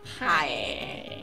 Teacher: I feel like Michigan's typical accent is very nasally.